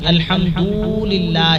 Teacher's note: اور اسی طرح کسی لفظ کو بڑھا دے، جیسے الحمدللہ رب العالمین میں الحمد کی دال کے اوپر پیش ہے اور پڑھنے والا اس کے بعد اس طرح پڑھے جیسے سننے والے کو لگے کہ واو پڑھا جا رہا ہے، یعنی الحمدللہ کر کے پڑھے۔ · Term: لحن جلی